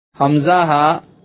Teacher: حلق کے نیچے والے حصے سے ادا ہوتے ہیں